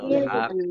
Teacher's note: Kemudian qafnya dibaca double, ada tasdidnya.